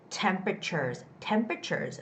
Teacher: this is the word with the first syllable stress